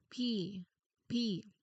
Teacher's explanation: For pot, you your throat should feel quiet and relaxed until you actually reached the vowel.